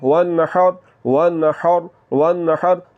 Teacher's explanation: تو ہا کی آواز حلق کے درمیان والے حصے سے نکلتی ہے